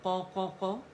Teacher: موٹائی سے قا قا قا, سیکنڈ درجے کی تفخیم ہے